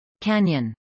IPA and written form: ˈkænjən (canyon)